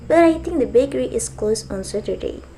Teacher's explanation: on Saturday is the new information, so you can use falling tone to pronounce it